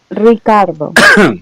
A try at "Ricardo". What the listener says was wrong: Yeah, there's no A in Ricardo.